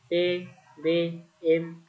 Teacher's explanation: Ini Bunyi dapat dikelompokkan sebagai berikut bagian pertama bunyi bilabial yaitu bunyi yang dihasilkan oleh keterlibatan bibir atau labium bawah dan bibir atau labium atas